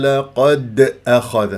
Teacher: شوف الدال ساكنه مقلقله قلقله صوره في وسط الكلام لانها مربوطه بكلمه اخذ قد اخذ خطا هذا مسك اذا تضرب